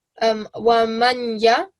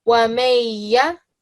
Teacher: So rather than saying wa manya, I will say wa mayya. Okay, we will get rid of the noon. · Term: idgham